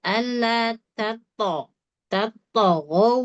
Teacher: Alata tetap ta tipis. To baru tebal.